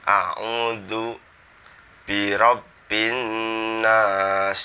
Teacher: zalnya itu di ujung lidah ditempelkan dengan gigi depan yang atas